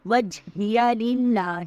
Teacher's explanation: للہ میں اللہ کا نام باریک پڑ جائے گا